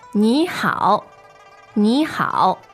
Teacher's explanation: Those are 2 third tones, right?